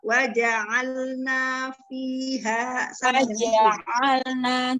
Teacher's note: Di waja'alna, naknya jangan terlalu panjang. Satu ayunan saja.